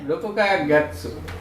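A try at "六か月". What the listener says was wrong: রকুকা গেৎসু পরে, রকুকা গেৎসু পরে ইকিমাস। এখানে রকুকা গেৎসু হবে না, কি হবে রোক্কা গেৎসু। ওই যে বেতিম রোক্কা মানে রকুকা থেকে কি হচ্ছে রোক্কা হয়ে যাচ্ছে।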